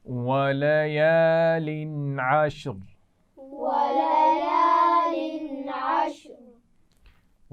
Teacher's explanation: وَلَيَالٍ تنوین پر غنہ نہیں ہوگا کیونکہ اس کے بعد عین ہے